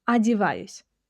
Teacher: the unstressed o in the word adivayus, adivayus, which is pronounced as ah.